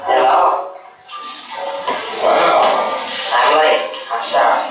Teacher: Hear the sound of a voice which goes very low pitch